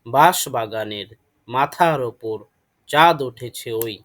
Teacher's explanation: এখানে প্রথম অক্ষরগুলো উচ্চারণের সময় শাসাঘাত পড়ে বা ঝোঁক দিয়ে পড়তে হয়, আর দাগাঙ্কিত অক্ষরগুলোতে মিল বা অনুপ্রাস পরিলক্ষিত হয়।